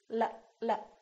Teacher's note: it's going up and down right behind your upper teeth